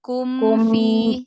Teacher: Alirkan mim sukunnya jangan berhenti.